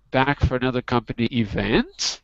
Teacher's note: That's a question. You got to go up at the end.